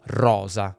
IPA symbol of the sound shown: z